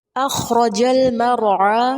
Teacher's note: خا پر ہمس کریں گے، را زبر کی کنڈیشن میں ہے، پر ہوگا. اخرج المرعى، یہاں جو لام ہے لام قمریہ کہلاتا ہے، عین کو وسط حلق سے ادا کریں گے، کھڑی زبر الف مدہ کے قائم مقام ہوتی ہے، اس لیے وقف بھی الف مدہ کی صورت میں کریں گے.